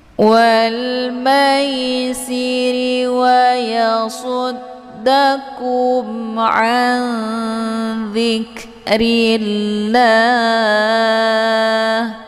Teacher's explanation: Hukum bacaan ikhfa ausad dibacanya sambil didengungkan. · Cara bacanya nunnya disamarkan kemudian siap-siap menuju ke huruf dza. Jadi nun ini bagaikan bacaan yang digantungkan. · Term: ikhfa au shad